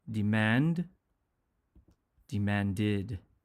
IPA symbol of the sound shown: ɪd